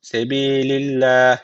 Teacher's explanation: için yani uzatarak durduğumuz için burada arkadaşlar meddi Arız tecvidi var hadr okuduğumuz için sadece bir Elif uzatıp öyle duruyoruz